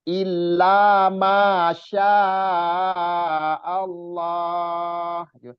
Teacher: Jadi yang dua-dua harokatnya jangan terlalu panjang juga.